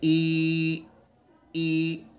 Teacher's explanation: یا مدہ سے پہلے زیر ہوتا ہے، اس لیے اس کو ادا کرتے وقت منہ میں پستی ہوتی ہے